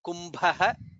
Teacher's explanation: And then bha is mahaprana, kumbha.